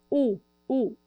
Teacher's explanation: Vogal U, eu tenho muito espaço lá atrás, meu palato mole também está erguido, tenho o lábio projetando esse som para frente, e laringe também está baixa, U.